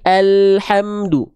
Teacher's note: dari tepi lidah depan kiri dan kanan menyusur keduanya sampai ke ujung lidah. Sehingga pelafalannya bukan al, tapi alhamdu. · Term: huruf lam